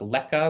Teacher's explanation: So the presence of an L in the same word or in the same foot also encourages this T to become K. So in like leka, which is letter, the English word letter, but the T becomes a K. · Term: dissimilation process